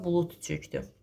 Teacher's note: Və yaxud da özündən sonra samitlə başlanan söz də gələndə, məsələn bulud çökdü deyirəm ətrafa bulud çökdü. Kar tələffüz olunacaq. D-nı t kimi deyəcəyik. · Kar tələffüz olunacaq. D-ni t kimi deyəcəyik. Niyə? Çünki burada ona görə d kimi deyəcəyik, bulutu t kimi deyəcəyik ki, çünki çökmək sözü samitlə başlayıb, yadınızda qalsın.